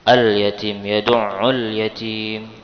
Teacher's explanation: jadi lamnya tidak terlewatkan alias terbaca, ya, maka dinamakan alif lam qamariyah